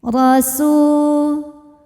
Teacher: Huruf ro dibunyikan secara tafkhim. Sebab ro berbaris di atas yaitu baris fathah. Maka huruf ro ini panjang 2 harokat.